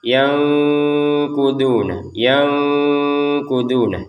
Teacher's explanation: Nun sukun bertemu qof ini kita bacanya dengan samar ya. Yanguna yanguna yang jadi dibaca dengan samar jangan dibaca jelas yanuduna kan jelas itu.